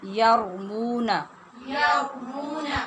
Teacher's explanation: را میں مشابہت تکرار جو زبان پہ لڑکھڑاہٹ پیدا ہوتی ہے اس کا پیدا ہونا ضروری ہے، اور را کی آواز آنی چاہیے۔